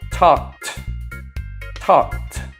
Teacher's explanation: k sound is unvoiced and therefore the ed sounds like a t